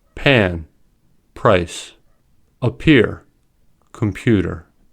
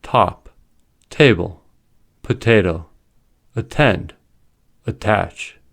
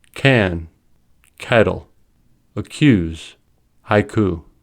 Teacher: When p, t, and k come at the beginning of a word or at the beginning of a stressed syllable, they are aspirated. That is, they are pronounced with a small puff of air.